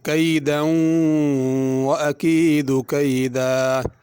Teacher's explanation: کیدا میں بھی اسی طرح ہے، کیدا پہ اگر رکیں گے تو اسی طرح پڑھیں گے کیدا، اور غنہ بھی نہیں ہوگا۔ اگر ملا کے پڑھیں گے تو پھر غنہ ہوگا